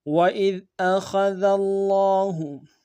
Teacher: وَإِذْ أَخَذَ اللَّهُ، وَإِذْ میں حمزہ کو ذال کے ساتھ ملانا ہے، ذال کو باریک ادا کریں گے، خاء کو موٹا ادا کریں گے، ذال کو لفظ اللہ کے لام کے ساتھ ملانا ہے، تشدید ہے، زور دیں گے کہ لام کے اوپر کھڑا زبر ہے، ایک انداز میں کھینچیں گے، ہاں کو نون سے ادا کریں گے۔